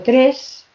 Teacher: si digo tres es una S sorda